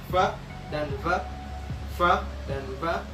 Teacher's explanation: labiodental, yaitu pada saat bibir bagian bawah dan gigi bagian atas bertemu untuk memproduksi satu bunyi